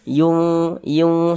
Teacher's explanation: Bunyi nunnya dibaca samar, jangan dibaca yun. Nah, jangan dibaca jelas n-nya tuh dibaca jelas yun. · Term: ikhfa hakiki